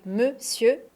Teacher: c'est le même son E dans les deux syllabes. Monsieur. Et on ne prononce pas le R.